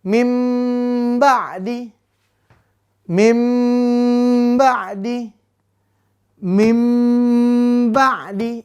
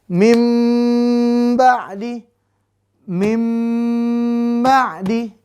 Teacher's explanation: Ingat bunyi NN ini yang ada di nun sukun atau tanwin diganti M dengan dengung. Diganti mim ditambah dengung 2-3 harokat. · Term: iklab